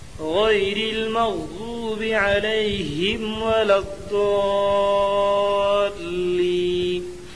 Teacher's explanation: حرف مد کے بعد والے حرف پر تشدید ہے، اس لیے مد لازم ہوگا۔ مد لازم کو 4 الف 5 الف کے برابر کھینچ کر پڑھیں